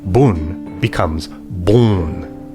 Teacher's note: Melt the may that was me to moy and then mu and the i and light to let the o of old poet pout is from here on vowels before n and m will flow through the nose